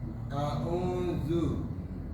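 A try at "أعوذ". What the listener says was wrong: Zu masih kurang tipis. Za. Saya nggak lihat lidahnya keluar. A'udzu. Zu. Tipis sedikit lagi.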